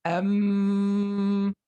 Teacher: the nasal sound right because when you say um when you you totally close the the lips right so the the sound is coming out from your nose